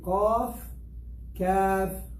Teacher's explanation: They are both of them from the back of the tongue, but one is deeper. Kaf, look, ek, kaf, like a cake.